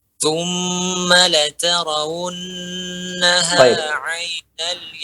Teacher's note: tingkatan gunnah tertinggi apabila nun atau mim bertasydid dan pada hukum idgham. Maka gunnahnya panjang di sini.